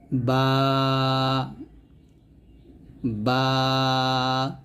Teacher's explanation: ঠোঁটের মিলিত ভিজা অংশ পৃথক করার মাধ্যমে উচ্চারণ করতে হবে অর্থাৎ দুই ঠোঁটের ভিজা অংশ মিলিয়ে আমরা বা টা উচ্চারণ করব নরম ভাবে বা বা এরকম দুই ঠোঁটের ভিজা অংশে মিলবে এবং বা টা